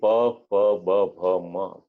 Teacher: જ્યારે પ, ફ, બ, ભ, મ બોલીએ તો આપણા બંને હોઠ એ ભેગા થાય છે